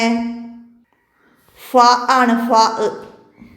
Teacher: താഴെ ചുണ്ടും മേലെ മുൻപല്ലുകളുടെ തലയും ചേർന്ന് വരുന്ന ഒരേ ഒരു അക്ഷരം ഫ ആണ്.